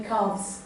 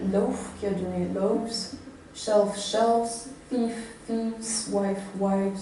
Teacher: Mais en plus de cette nivellation de pluriel en ES, devenu S, pour un mot tel que calf, le phonème final, le son F de fin, est voisé au pluriel pour donner calves. C'est-à-dire qu'on fait vibrer ces cordes vocales en prononçant la biodontale. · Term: voisement